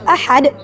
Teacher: ha di sini keluar dari tenggorokan bagian tengah, jadi lembut